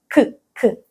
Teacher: тут ми до піднебіння починаємо торкатися не кінчиком язика А тою дальшою частиною